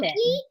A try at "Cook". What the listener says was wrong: I think the E is silent. So it would be George Cook.